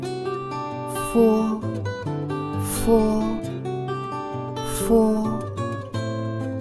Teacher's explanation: Tiếp theo là Phô, phô. Âm môi răng, răng trên tiếp xúc môi dưới. Khi phát âm, luồng hơi từ bên trong thoát ra ngoài, dây thanh không rung.